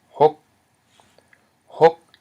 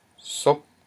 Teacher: High consonant plus a short vowel and a dead syllable equals a rising tone.